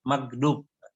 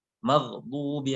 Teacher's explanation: ada ghain mati, itu kadang-kadang kita bacanya ke G, magdub. Padahal maghdubi alaihim.